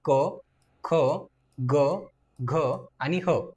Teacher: कंठवर्ण ज्यांचा उच्चार कंठातन होतो त्यांना आपण कंठवर्ण अस म्हणतो किंवा कंठवर्ण असं म्हणतो यामध्ये क ख ग घ आणि ह